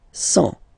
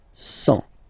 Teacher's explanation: And the last one, 100. Remember, final T not pronounced.